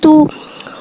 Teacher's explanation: तो तो को एक अलिफ यानी दो हरकत के बराबर खींच के पढ़ेंगे। तो हुर्फ मुस्तआलिया है, लिहाजा इसकी आवाज़ हलक से मोटी अदा होगी। तो के ऊपर पेश पेश को टो की गुलाई के साथ अदा करके पढ़ेंगे।